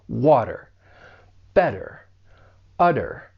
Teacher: I am going to pronounce it as a flat T. It's going to sound like a soft D. And this is pretty common with the American accent when the T comes between 2 vowel sounds.